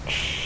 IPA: ʃ